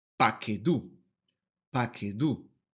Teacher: aquí la sílaba tónica es la última sílaba y ahí recae el acento